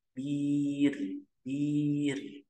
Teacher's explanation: rnya di situ dibaca tipis karena didahului oleh mad asli yang kasrah · ini ya karena ini bukan ba bukan huruf isti'ala, maka kita baca dengan tipis atau kita baca dengan tarkik huruf ro-nya.